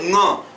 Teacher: जो प्राण वायु है वह मुख से भी निकल रही होगी और थोड़ा थोड़ा नाक में भी वह बात जा रही होगी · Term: पंचम वर्ण